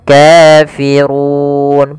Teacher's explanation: Kemudian kafirun pada lafal ru di sini ra tebal, yaitu ra tafkhim. Ra-nya dibaca dengan tebal